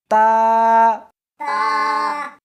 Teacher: اس حرف کو زبان کے اوپر کے تالو سے ملا کر پڑھیں گے۔